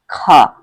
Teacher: यह स्पर्श व्यंजन भी है कंठ ध्वनि भी है अघोष भी है और महाप्राण भी है